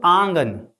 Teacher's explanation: आंगन तो हवा नाक और मुंह दोनों से निकलेगा। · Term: अनुनासिक